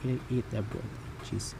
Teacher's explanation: iambic because the stress is in the second syllable of a foot. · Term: iambic trimeter